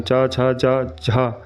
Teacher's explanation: च, छ, ज, झ तालव्य स्पर्श व्यंजन है। लेकिन इनके उच्चारण में स्पर्श के बाद हवा कुछ रगड़कर यानी संघर्ष के साथ बाहर निकलती है। इसलिए इन्हें स्पर्श संघर्षी कहते हैं।